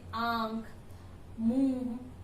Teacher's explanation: अनुनासिक में चंद्र बिंदु का प्रयोग होता है। इसमें उच्चारण नाक और मुंह से किया जाता है